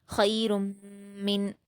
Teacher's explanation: را پر تنوین ہے پیش کی، اس کو پر پڑھیں گے، اور تنوین کے بعد میم ہے جو کہ حروف یرملون میں سے ہوتا ہے، ادغام یرملون میں سے، اس لیے یہاں پر ادغام ہوگا اور غنہ کے ساتھ ہوگا کیونکہ میم مشدد ہے، تو را کی تنوین کو میم سے ملا کر غنہ سے پڑھیں گے